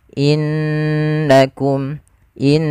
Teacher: beberapa kesalahan yang terjadi dalam melafalkan gunah tidak menahannya contoh innakum harusnya ditahan dulu innakum in sambil dimasukkan ke rongga hidung kita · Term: gunnah